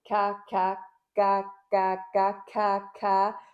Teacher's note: Si je fais ka, je laisse l'air passer, je pousse même un peu sur l'air, au lieu de faire ka en rétention.